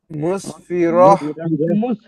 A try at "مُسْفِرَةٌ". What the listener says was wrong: ভাই র এটা হা তো ভাই গলার ভিতর না, গলা ছেড়ে মুসফিরাহ, রাহ